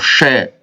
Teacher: श सिटी की आवाज आती है और मुख से गर्म हवा भी निकलती है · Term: ऊष्म वर्ण